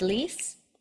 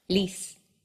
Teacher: will come up towards the roof of your mouth lease but in Spanish only the tip of your tongue comes up and it reaches just behind your front upper teeth · In English, when we say a word like lease, the back and front of your tongue both will come up towards the roof of your mouth.